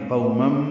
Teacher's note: قو ہونٹوں کو آگے کی جانب لائیں گے، نا تمام گول کریں گے. تنوین کے بعد میم آنے کی وجہ سے مم، یہ ادغام ہے غننے کے ساتھ. آواز ناک کے بانس سے ملے جا کر دو حرکات تک ٹھہرائیں گے. قومم.